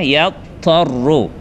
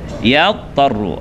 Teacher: Hujung lidah kena atas gigi kacip atas.